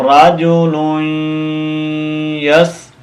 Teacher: ادغام مال غنہ، یعنی اس تنوین کو ہم اس یا کے ساتھ کنیکٹ کریں گے اور ساتھ غنہ بھی کریں گے